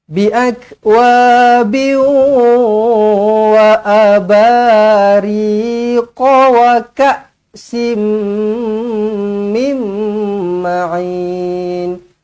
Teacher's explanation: Tanwin tak selari bertemu dengan waw. Jumpa dengan huruf waw, dimuncungkan mulut, didengungkan dengan 2 harukat.